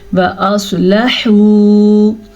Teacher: سواد کو پر پڑھنا ہے، سواد ہمیشہ ہی پر پڑھا جاتا ہے، اور لام کو لمبا نہیں کرنا، لام کے اوپر زبر ہے اور یہ واو مدہ ہے.